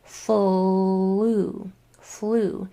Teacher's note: And that's a good example of this vowel sound of the long U changing based on the shape that your mouth was in when it made the sound before it. So this U long sound sounds like oo because my mouth was already in that shape when I made the L sound